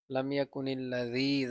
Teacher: জি জেরের পরে ইয়া সাকিন মদের হরফ এক আলিফ লম্বা